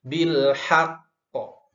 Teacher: ada huruf qalqalah diwakafkan tapi hurufnya bertasydid, maka ditahan terlebih dahulu. Bil haqqo. Jadi nahannya nggak usah lama-lama ya.